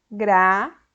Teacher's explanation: A sílaba má é a sílaba tônica, ou seja, a sílaba mais forte, que eu pronuncio com um som mais forte. Ela ocupa a posição de antepenúltima.